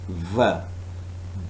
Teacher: When you produce v, upper teeth, lower lip. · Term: labiodental